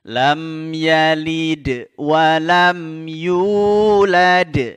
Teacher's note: huruf Dal ketika sukun atau disukunkan maka harus mantul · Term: Qalqalah